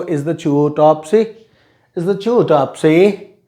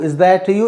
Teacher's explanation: if t comes before ya, then t is pronounced as ch. So is the chew, Topsy?